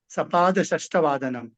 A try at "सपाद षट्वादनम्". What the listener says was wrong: Yes yes, सपाद षट्वादनम। षष्ठ न षट।